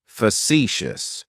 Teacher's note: Facetious has 3 syllables, and the stress is on that second syllable.